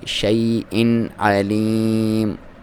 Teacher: حمزہ کی علیحدہ ساؤنڈ آئے، آئین کی علیحدہ. آپ نے آئین اور حمزہ کی ساؤنڈ کو مکس نہیں کرنا، اور لام کو آپ نے دبا کے پڑھنا ہے.